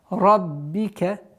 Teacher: Ра твердая, каф. И уходим на мягкое произношение ба.